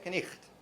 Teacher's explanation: it had a K before N, and then it had something like what we call a velar fricative in where the GH is written